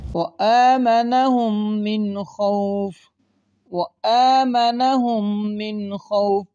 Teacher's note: اگر آپ غور کریں نون ساکن کے بعد خا آ گئے، یہاں پہ گنہ نہیں کریں گے۔ قاعدہ یہ تھا نون ساکن اور تنوین کے بعد حرف حلقی میں سے کوئی حرف آ جائے وہاں پر اظہار ہوگا، یعنی گنہ نہیں کریں گے۔